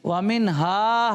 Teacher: اظہار. اظہار ہوگا یعنی اس کو بغیر غنے کے پڑھیں گے